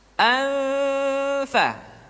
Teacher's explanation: Dan yang ketiga, nun mati tanwin ketika digunakan posisi makhraj sudah berada pada huruf fa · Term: ikhfa